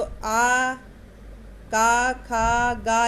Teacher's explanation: इनका उच्चारण स्थान कंठ से होता है और वर्ग का नाम है कंठ